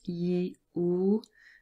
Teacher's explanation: E and oo are both long and both of them are relatively close